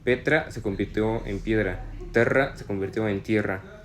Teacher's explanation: Por ejemplo, la E breve del latín se convirtió en IE en español